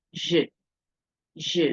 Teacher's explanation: this e that is there is silent, so it will sound as if you are only pronouncing the consonant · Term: silent E